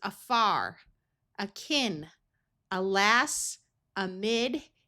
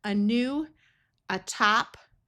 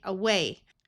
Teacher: Here are some words where the A will schwa and sound like a short U. AR says R, so this is afar, akin, alas, amid.